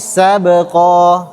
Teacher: kalau dia sukun maka ada hukum namanya qalqalah, harus dipantulkan